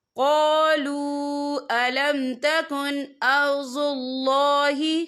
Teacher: واو ساکن سے پہلے پیش ہے اور اس پر چھوٹی سی مد بھی ہے تو ہم یہاں 3 یا 4 حرکت کے برابر کھینچ کے پڑھیں گے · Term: واو مدہ